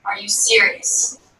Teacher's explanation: Down in pitch, more which you would expect of a statement.